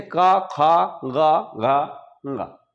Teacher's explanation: जब का कहते हैं तो जीभ हम कंठ में मोड़ते हैं, कंठ में स्पर्श कराते हैं, इस वजह से ये इनका उच्चारण कंठ से होता है। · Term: का वर्ग